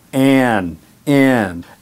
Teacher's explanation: the AN sound in American English is very nasal